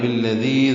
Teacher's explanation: ذال لمبی سے پڑھیں گے اور دو حرکات لمبا کریں گے، یا مدہ مدہ اصلی